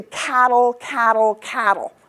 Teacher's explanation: Now I move to the next word, and I'm going to keep my cat strong, but I'm going to change the T's, because this is Canadian English, and I'm going to make something called a glottal stop